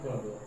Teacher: यानी कि पहला और तीसरा व्यंजन ये आपके स्पर्श अल्प प्राण व्यंजन की ध्वनियां हैं।